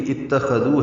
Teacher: حمزہ کو تا سے ملائیں گے، تا باریک پڑھیں گے، خو پر پڑھیں گے، دال کو نرمی سے پڑھیں گے اور لمبا کریں گے